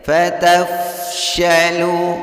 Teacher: lu di sini hukum bacaan maqtabi'i ada waw sukun yang diawali baris dhammah pada huruf lam. Membacanya dipanjangkan cukup 2 harokat saja.